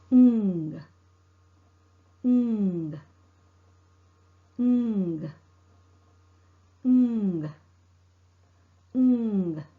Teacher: Keep in mind the vocal cord vibrates. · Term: ng sound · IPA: /ŋ/